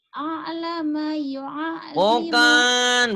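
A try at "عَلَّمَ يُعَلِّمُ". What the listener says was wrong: Bukan a'lama. Kalau a'lama ada hamzahnya. Allama yu'allim. Ngalir. Allama. Allama yu'allimu.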